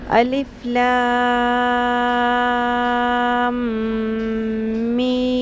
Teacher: لام کے اوپر بھی بڑی مد ہے، 5 الف کے برابر لمبا کھینچنا ہے، مد متصل ہے، اور میم کے اوپر بھی، دونوں کی مقدار برابر رکھنی ہے.